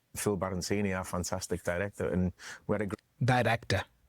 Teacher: He doesn't say director but dire. He's flapping the R.